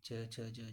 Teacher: जीभ का जो आगे का भाग है वे कठोर तालु को स्पर्श करता है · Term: तालव्य व्यंजन